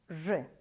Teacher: буква ж звук же согласный твердый звонкий